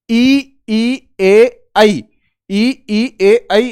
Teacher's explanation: आप इनका उच्चारण करोगे तो आप महसूस करोगे कि आपका जीवा का अग्र भाग क्रियाशील हो रहा है। जीवा का अग्र भाग क्रियाशील हो रहा है इनके उच्चारण में। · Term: अग्र स्वर